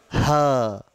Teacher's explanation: ह वाइब्रेशन हो रहा कंठ में